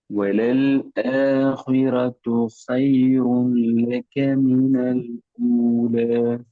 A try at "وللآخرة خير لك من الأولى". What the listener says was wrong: ஹ அல்ல, அது ஹான்னு மாறணும். எந்த இடத்துலயும் அது மாறணும்.